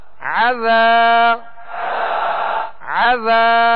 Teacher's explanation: عین زبر ع ذال الف زبر ذا عذا عذا. ذال کو نرمی کے ساتھ ادا کرنا ہے اور ایک الف کی مقدار کھینچیں گے. یہاں الف مدہ ہے.